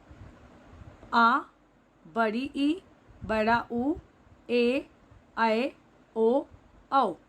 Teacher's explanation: जिन स्वरों के उच्चारण में हर्ष स्वर के उच्चारण से 2 गुना समय लगता है, उन्हें दीर्घ स्वर कहते हैं। · ये संख्या में 7 होते हैं और इनको बोलते समय हर्ष स्वर से 2 गुना समय लगता है।